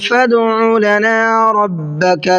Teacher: دال میں قلقلہ کریں گے، دال حروف قلقلہ میں سے ہے اور اس کے اوپر جزم بھی ہے